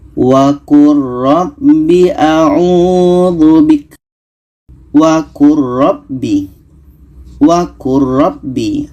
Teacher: Di sini ada lam bertemu ra, maka bunyi lam ini kita masukkan ke ra.